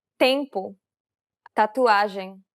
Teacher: It's identical to the T sound in the word stand. This is also an unaspirated sound.